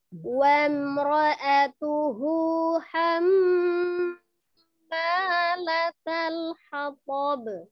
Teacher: Itu wamro'atuhu, hu-nya itu 2 harokat ya